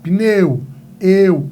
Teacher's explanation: o E é mais forte. E o U é mais fraco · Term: ditongo